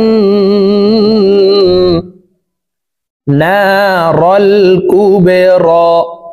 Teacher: বা কলকলার হরফ নিচের দিকে ধাবিত করে ধাক্কা দিয়ে উচ্চারণ করব